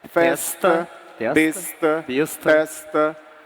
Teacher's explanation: o paulistano não chia o S antes do T